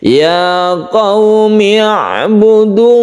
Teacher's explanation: kita tawasut Artinya kita tidak terlalu menekan huruf Ain tersebut demikian juga tidak terlalu melepas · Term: sukun Ain